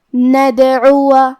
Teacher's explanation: دال بھی حروف القلقلہ میں سے ہے، لہذا ہم یہ حرف کو ہلاتے ہوئے یہ کلمہ کو پڑھیں گے